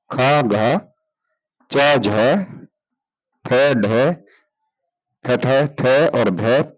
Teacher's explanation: महाप्राण जिनको बोलते समय मुंह से हवा ज्यादा निकलती है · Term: महाप्राण व्यंजन